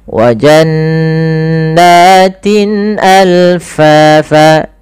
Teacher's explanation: karena bertemu setelahnya Hamzah maka ini kita namakan dengan izhar halqi